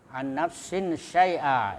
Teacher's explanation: ini tanwin ketemu shin, nah, itu ikhfa, ya, berdengung